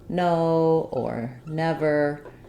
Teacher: And that placement is that the tongue is behind the teeth on the alveolar ridge. It's lifted up and it's sealing across. And the n sound is what's called a nasal sound because we don't allow air to escape from the mouth because the tongue is sealing, and so the resonance is in the nose.